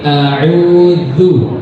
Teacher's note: Ini ujung lidah bertemu dengan ujung gigi seri atas. Bukan digigit ya, bukan enggak, tapi dikenain aja sedikit. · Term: huruf dal